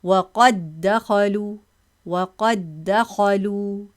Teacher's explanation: Drop dal to make idgham.